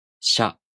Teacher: If you have trouble pronouncing Sha Shu Sho in this way, try to add the j sound, a very short one, between the sh sound and the vowel.